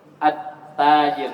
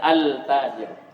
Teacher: lamnya itu menjadi ta ketika masuknya ke ta atttajir. Jangan altajir menjadi dal dilebur menjadi dal. · Jadi lamnya itu menjadi tak ketika masuknya ke tak. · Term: Idgam, idgham syamsi